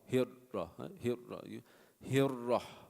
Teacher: It flows from the ra, like vibrates. The tongue vibrates, so it rolls almost, so it creates that sound. It's different than the other letters of rakhawa, like fa. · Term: rolling